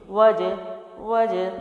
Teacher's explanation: اگلا جو لفظ ہے وہ دیکھتے ہیں، وجبرنی، واو جو ہے وہ زبر کے ساتھ ہے، جیم جزم والا ہے یعنی، اور جیم حروف قلقلہ میں سے بھی ہے تو میں ہلا کے پڑھوں گی